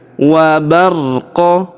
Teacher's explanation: Karena huruf qa atau huruf qaf ketika berharokat sukun maka dia dibaca pantul atau qalqalah.